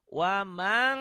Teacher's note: Karena nun mati ketemu kap dan kop, ikhfanya banget engnya.